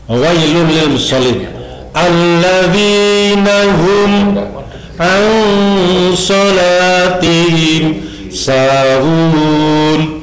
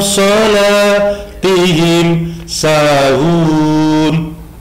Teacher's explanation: An salat, nun ketemu shad. Nun, huruf nun ketemu shad. Ini dibaca samar-samar. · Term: ikhfa